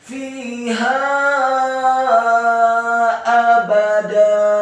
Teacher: Kata abada, alifnya dibaca tipis fathah satu harokat, ba-nya dibaca tipis fathah satu harokat, dan dalnya dibaca tipis fathah dua harokat karena setelahnya ada alif.